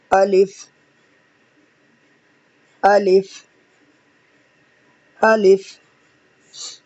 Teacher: اچھا الف جو ہے نا منہ کے خالی حصے سے ادا ہوتا ہے